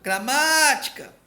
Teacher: O má é a mais forte. Opa, é a proparoxítona, acentua.